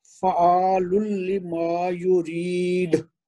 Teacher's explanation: تو جی چونکہ ساتھ مد آ رہی ہے اور مد کے بعد کلکلہ کبرا تھوڑا مشکل ہوتا ہے، لیکن اس کا نظر آنا چاہیے، وہ یعنی آواز میں محسوس ہونا چاہیے. یہ کوشش کریں کہ وہ دال کا کلکلہ کبرا کریں آخر میں